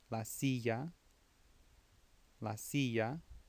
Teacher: Don't make a L sound. They make a ya or a ja, or sometimes even a sha if you're in, I believe, Argentina or so. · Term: double L's